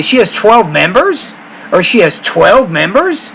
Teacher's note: you got to put a lot of surprise on the word 12